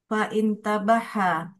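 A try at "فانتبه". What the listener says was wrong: Hamzah wasal nggak dibaca dia Om.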